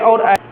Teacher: देखो कंठ और तालु दोनों से साथ साथ बोला जाता है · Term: कंठ तालु